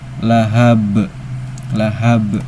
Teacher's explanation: pantulannya besar karena qalqalah kubra.